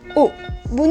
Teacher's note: dihasilkan oleh posisi lidah yang berada di belakang dengan posisi rahang yang tertutup